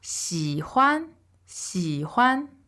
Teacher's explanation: So that's a XI third tone, HUAN neutral tone.